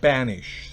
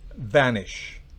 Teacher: En el primer caso, banish, tenemos una B bilabial, banish, se pronuncia con la B, los labios bloqueados enteramente. En la segunda, recuerde, se pronuncia con un labio, con el labio inferior y los dientes, vanish. Los dientes superiores, por supuesto.